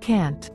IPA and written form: kænt (Can’t)